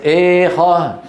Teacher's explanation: يستطيع المتكلم أن يخلط الألف بالياء بأن يفتح فمه نصف فتحة ويرفع لسانه نصف رفعة في آن واحد، فينتج صوت خليط بين الألف والياء اسمه الألف الممالة